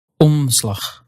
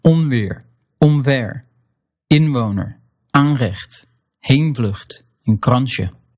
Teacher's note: you won't bring your tongue or lips all the way into that N or M position. You'll just skip that and go straight to the next sound.